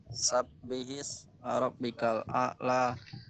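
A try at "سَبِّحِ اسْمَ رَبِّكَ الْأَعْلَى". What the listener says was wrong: Kalau Al-A'la itu sin, bukan sa. Sin, sabbihis bukan sabbihis. Jadi jangan sampai kita terkecoh antara sa titik 3 kemudian dengan sa.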